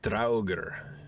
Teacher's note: Flip the R to make it sound even cooler